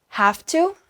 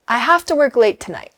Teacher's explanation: This one surprises a lot of learners, but have to in natural speech becomes have to. The VE gets dropped and the to becomes a t sound. It all runs together in one breath.